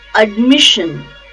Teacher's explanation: the stress is on second syllable mish